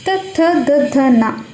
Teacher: ನಾಲಿಗೆ ತುದಿ ಇದೆಯಲ್ಲ ಅದು ಮೇಲ್ಗಡೆ ಹಲ್ಲಿನ ಹಿಂಬದಿಗೆ ಉಳಿಯುತ್ತೆ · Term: ದಂತ್ಯಾಕ್ಷರಗಳು